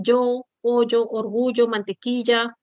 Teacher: mantequilla se dice mantequilla Ese es el yeismo reemplazas a la la lateral palatal Sonora por la fricativa palatal Sonora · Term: yeísmo